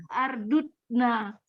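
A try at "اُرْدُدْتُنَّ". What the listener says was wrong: Urdutnya. Sulasi itu enggak ada fil amar kepalanya a. Fil amar itu kepalanya kalau enggak iu di sulasi. Itu hanya tuasan af'ala ya.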